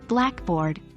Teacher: we typically stress the first word in the compound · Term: stressed syllable